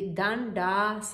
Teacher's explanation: Danda et le deuxième motana. Et les deux A deviennent un long A.